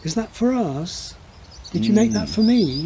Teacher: the fall rise in a yes no question which is really not american